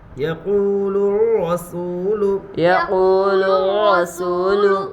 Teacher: واو کے اوپر جزم ہے، جزم والے حرف کو پیچھے والے حرف سے ملا کر پڑھتے ہیں، واو ساکین سے پہلے پیش ہے اس لیے واو مدہ ہوگا، واو مدہ کو ایک الف کے برابر کھینچ کر پڑھے